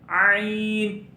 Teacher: اس کے بعد عین کے اوپر کھڑی زبر ہے، تو عین کو ہم ایک الف جتنا لمبا کر کے پڑھیں گے، اور عین حروف حلقی میں سے حلق کے درمیانی حصے سے ادا ہوگا. عین اور ہا کا مخرج ایک ہی ہے، عین.